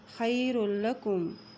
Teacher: لام کے اوپر شد ہے اس لیے را جو ہے وہ لام کے ساتھ مل رہا ہے۔